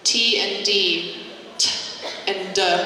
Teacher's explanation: The only difference is one is voiced, D, and one is unvoiced, T.